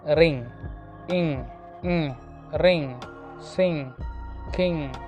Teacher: Velar, nasal, voiced. Velar, back of the tongue, soft palate are involved. Nasal, air passes through the nose. Voiced sound ആണ് ring, ing, ring, sing, king.